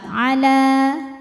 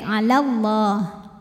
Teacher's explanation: Tapi dibaca panjangnya hanya saat berhenti saja. Kalau wasal atau meneruskan bacaan, madnya ini gugur, la-nya dibaca pendek. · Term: takhallus bil hadfi